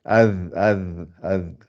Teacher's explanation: La sortie du zal, normalement, c'est l'extrémité des dents du haut, les incisives en haut, avec l'extrémité de la langue, ça fait, et on sort un petit bout de la langue, ça fait az, az, az.